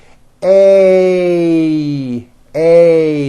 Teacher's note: Notice how my mouth also closes a little bit at the end of the vowel. A. And notice it's not E as in egg. · If you listen carefully, you will hear that this sound is a combination of two vowel sounds. You start with an A, and then you glide up to an E. A, A. Notice how my mouth also closes a little bit at the end of the vowel. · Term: A sounds